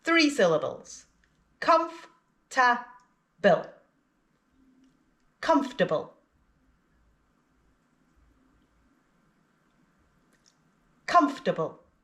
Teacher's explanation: Again, it looks like it's got 4 syllables, but we only pronounce 3. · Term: silent syllable